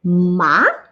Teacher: it's the falling rising tone